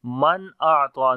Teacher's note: گے اور لمبا بھی کریں گے، الف مدہ ہے، من اعطى، نون ساکن کے بعد حمزہ آ گیا، اظہار کریں گے نون کا، نون کی آواز کو ظاہر کر کے پڑھیں گے